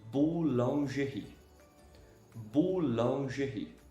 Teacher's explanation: OU, OU, o som de U, normal. O U sem fazer esforço aqui com o biquinho, né?